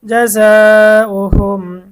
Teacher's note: মিম সাকিনের পরে জিম এসেছে মিম সাকিনের ইজহার গুন্না ছাড়া স্পষ্ট করতে হবে